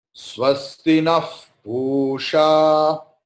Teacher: before pa, pakara, there is visarga. So pakara will be transformed into fa.